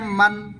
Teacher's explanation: দুই ঠোঁটের শুকনো অংশ থেকে